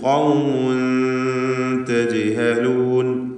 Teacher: തജ്ഹലൂൻ എന്ന് പറയുമ്പോൾ ജീമിൻ്റെ സുക്കൂൻ ഖൽഖല സുഗ്റ നൽകി ശബ്ദം ഹറക്കത്ത് പോലെ ചലിപ്പിച്ച് വ്യക്തമാക്കേണ്ടതാണ്.